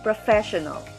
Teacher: first syllable fair second syllable show third syllable null fourth syllable the stress is in the second syllable